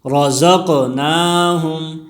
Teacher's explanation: را موٹی پڑی جائے گی، اور قاف میں قلقلہ ہے، حروف قلقلہ قاف طا با جیم دال، جب یہ ساکن آ جائے تو اس میں قلقلہ ہوگا، آواز میں جنبش ہوگی۔